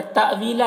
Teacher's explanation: تأویلا یہاں پر حمزہ ساکنہ ہے، جھٹکا لگے گا